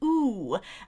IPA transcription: u